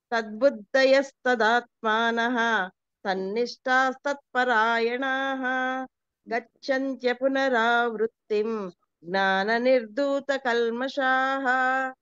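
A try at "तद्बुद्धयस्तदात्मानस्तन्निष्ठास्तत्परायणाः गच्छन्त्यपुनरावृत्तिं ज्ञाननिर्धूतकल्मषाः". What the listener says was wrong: Very good madam, బాగా చెప్తున్నారు.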